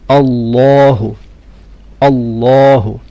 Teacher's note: The name of Allah should be full mouth.